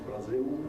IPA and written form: braˈziw (Braz(s)il)